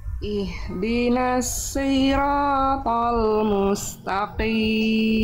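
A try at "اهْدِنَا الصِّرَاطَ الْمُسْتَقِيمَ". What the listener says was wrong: Nah shadnya masih kurang tebal dilatih lagi ya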